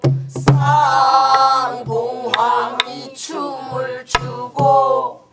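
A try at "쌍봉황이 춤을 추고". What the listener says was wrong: 쌍봉왕이 춤 아 봉왕이 길어요.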